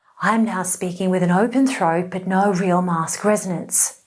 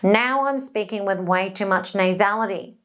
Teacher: place way too much resonance actually in the nose instead of balanced in the mask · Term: too nasal